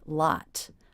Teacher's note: The final T, lot. I did release that and give it a true T sound.